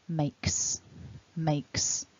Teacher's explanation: we add an unvoiced sound makes makes so you want some air to be hissing out of the mouth